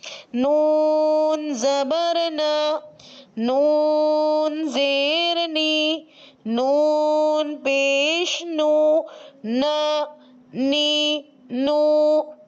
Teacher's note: انیاب سے لے کر ثنایا تک کے مقابل مسوڑوں سے لگتی ہے تو حرف نون ادا ہو جاتا ہے۔ ثنایا کے دانتوں کی جڑوں سے جب لگتی ہے نا تو حرف نون ادا ہو جاتا ہے۔